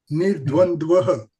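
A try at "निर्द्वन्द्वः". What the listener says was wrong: Correct.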